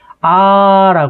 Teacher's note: 그러니까 입모양이나 혀의 위치나 소리값이 달라지지 않는 모음. 그러니까 예를 들어 아라고 했을 때 우리가 아무리 오랫동안 발음해도 아로 시작해서 아로 끝나죠. 이렇게 소리가 달라지지 않는 것을 우린 단모음이라고 얘기하는 것이고요.